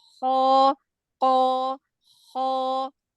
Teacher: kalau huruf Kho itu dia makhrajnya lebih dekat dengan huruf qof